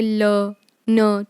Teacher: alveolar में क्या होता है, जो आपके ऊपर का सरफेस होता है ना, जैसे जब आपको कोल्ड वगैरह हो जाता है तो आपको ऊपर का सरफेस में कुछ होने लगता है ना, खारिश या कुछ भी, सो एल्वियोलर वो वाला रीजन होता है, ठीक है, टीथ के पीछे वाला जो प्लेन सरफेस होता है, ठीक है, वहाँ पे टच होते हैं